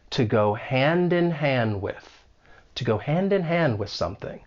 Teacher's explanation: So we can link that final d in hand with the vowel sound in, hand in. And then the next hand, that final D elides. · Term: elision